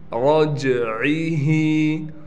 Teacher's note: रा को मोटा भी पढ़ना है और जीम पर क़लक़ला किया जाएगा, जीम हरूफ़ क़लक़ला में से है।